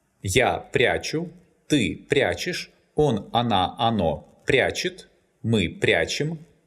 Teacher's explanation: The infinitive прятать is not stressed on the last syllable. That's why, in the present tense, the stress falls on the stem.